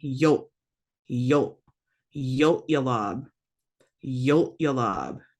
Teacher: So yolab is kind of an important word because it can mean parents or relatives, or if you put a two in front of it, it's to yolab now, and now it means ancestors. So yolab, you have that glottalized L, which kind of acts like a regular glottal stop in that it stops the sound short.